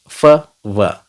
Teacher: हमारा lower lip है, उसे हम अपर टीथ को, फ्रंट टीथ को हम टच करते हैं लाइट सा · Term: फ्रिकेटिव्स